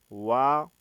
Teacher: दंत और ओष्ठ से उच्चारित होता है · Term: वकारस्य